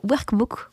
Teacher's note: Grâce à ce workbook, j'ai tendance à dire workbook, quand tu le phonise, je le prononce plus, on va dire, en prononciation française avec un R et pas un R roulé